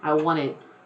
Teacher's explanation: I don't even pronounce that T